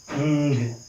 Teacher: we can feel how the air is trying to get released out of the nose